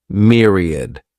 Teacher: This word has three syllables and the stress is on that first syllable. Mere sounds like mere myriad.